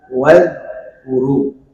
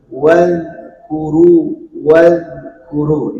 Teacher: Di huruf dal tersebut tidak boleh memantul, karena dia bukan termasuk sifat qalqalah ya.